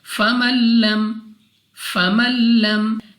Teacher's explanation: نون ہمارے پاس یہاں پہ ساکن ہے، لیکن نون کی آواز ہم نے نہیں نکالنی، ہم نے میم کو لام کے ساتھ ملانا ہے۔